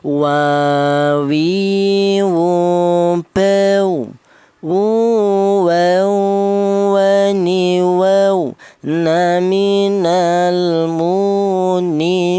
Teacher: Wa itu melibatkan dari kedua bibir yaitu bibir atas dan bibir bawah berperan akan tetapi renggang. Yaitu tidak rapat atau tidak nempel ya. · huruf wawu ini keluarnya huruf berasal dari kedua bibir yang renggang